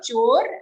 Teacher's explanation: After cho, we have a half ra, chor, and then dhvam.